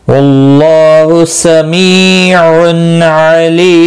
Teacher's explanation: کی صورت میں میم ساکن پڑھا جائے گا، وقف بالاسکان ہوگا، مد العارض وقفی ہوگا، 3 سے 5 الف کے برابر کھینچ کر وقف کریں گے